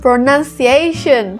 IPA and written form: prəˌnʌn.siˈeɪ.ʃən (pronunciation)